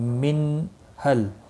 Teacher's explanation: نون ساکن کے بعد ہا آیا ہے، اظہار حلقی ہوگا، غنہ نہیں کریں گے